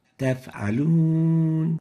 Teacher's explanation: First mistake is weakness of the whisper characteristic of the fa. F has a whisper.